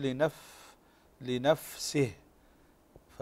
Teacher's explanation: بالحرف لضعف اعتماده على المخرج فهمس يكون اظهر في الفاء من السين